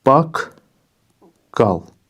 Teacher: Qoşa q samiti eyni cinsli cingiltili samitlərdən eyni cinsli qoşa q samiti yanaşı gələndə birinci cingiltili samit özünün kar qarşılığı ilə əvəz olunubdur